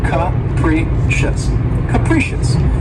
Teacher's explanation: The next adjective, which is one of my favorites, is capricious. And this word has three syllables, and the stress is on the second syllable. And keep in mind that first syllable has that schwa sound, that capricious.